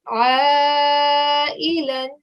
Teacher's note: it's an ayn sound that comes from your throat. So try saying this for me.